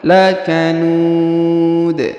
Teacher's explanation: Huruf nu dipanjangkan 2, boleh 2, boleh 4, boleh 6 harokat ya.